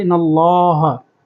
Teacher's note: لام کی تشدید کی واضح آواز نکالیں گے